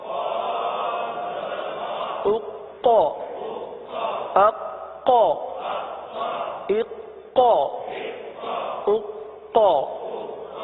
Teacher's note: اب ہے قاف، حرف قلقلہ کا، یہاں پر جماؤ بھی ہوگا قلقلہ بھی ہوگا